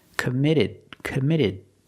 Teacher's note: the T in commit is between vowels so it's a fast D